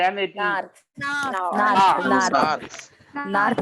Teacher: मतलब है कि आर को बोलेंगे नहीं